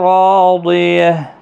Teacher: کو جھٹکے کے ساتھ نہیں پڑھنا ہے، ہا الف مدہ ہے، را پور پڑھا جائے گا زبر کی وجہ سے ، الف مدہ بھی ہے، را ایک الف کے برابر کھینچ